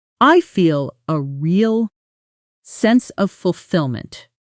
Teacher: with a small natural pause and slightly lower pitch on fulfillment, making it sound genuine rather than robotic